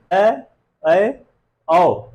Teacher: ऐसे स्वर जिनका उच्चारण करते समय हमारा मुख विवृत से थोड़ा सा कम खुलेगा, उन स्वरों को हम क्या कहेंगे? अर्धविवृत कहेंगे।